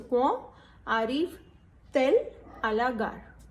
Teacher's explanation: Between two vowels, we use T as a liaison.